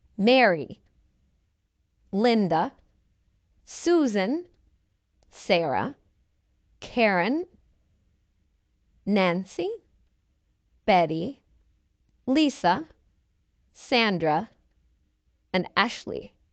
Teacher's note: where did you hear the stress on these names? On the first syllable.